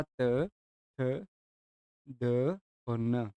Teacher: दंत में आता है आपका त, थ, द और न।